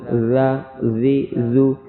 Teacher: زال نرمی کے ساتھ دانتوں کے درمیان میں زبان کی نوک آئے گی